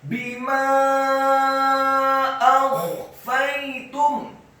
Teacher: Wa ana a'lamu bima akhfaitum, bima akhfaitum, baknya dibaca kasrah satu harokat, mimnya dibaca fathah 4 sampai 6 harokat. Karena setelah huruf mim ada alif dan di atas harokat fathah ada harokat bendera.